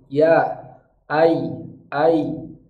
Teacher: Contoh huruf ya, berarti tengah lidah kita naik.